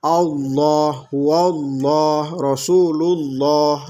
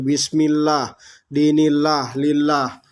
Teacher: ini tebal semua nih karena lafdzul jalalah nya patah atau dhomah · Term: tafkhim